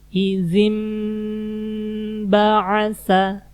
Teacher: maka huruf nunnya dirubah menjadi mim. Ini nun, di atasnya ada mim, jadi nunnya kita baca jadi mim. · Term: iqlab